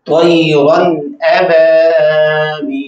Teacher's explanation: یعنی نون تنوین کو ظاہر کر کے پڑھیں گے غنہ نہیں کریں گے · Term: اظہار